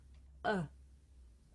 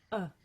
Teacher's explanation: this is a short vowel sound it's pronounced uh and to make this sound you just relax your mouth